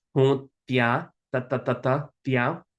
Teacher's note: We have that interdental T, so we're going to bite our tongue for that one.